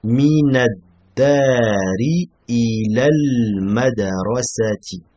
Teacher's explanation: On prononce ni le lem ici, car del c'est une lettre shamsiya. Pas de soukoun sur le lem, on prononce pas. Donc on passe directement du noun au del.